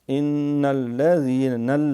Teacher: پھر یہاں پھر جو ہے وہ نون کے اوپر شد ہے، غنہ بھی ہوگا، ناک میں آواز جائے گی اور دیر بھی لگے گی ، ان الذین، لام باریک، ان